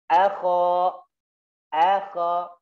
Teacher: nggak boleh o, nggak boleh o, tapi a-nya tipis. Akha, pokoknya tidak boleh tipis.